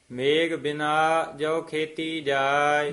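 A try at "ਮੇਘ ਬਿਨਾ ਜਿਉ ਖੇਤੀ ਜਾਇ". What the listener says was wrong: ਮੇਘ ਨਹੀਂ ਕਹਿਣਾ, ਘੱਗਾ ਲਾ ਕੇ ਬੋਲਣਾ।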